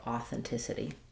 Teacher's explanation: Flapping that last t. Um making it sound a little bit more like a d.